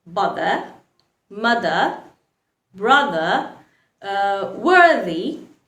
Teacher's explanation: we also make the voice sound for the th letter when it is in the middle of two vowels